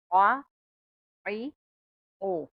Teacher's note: آ، ای، او، اوئیں حروف حلقیہ میں سے ہے، اب حلق کے درمیان سے پڑھا جائے گا.